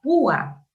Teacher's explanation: la vocal U tiene la fuerza de voz y se separa de la vocal abierta A. Se forman dos sílabas distintas. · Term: hiato acentual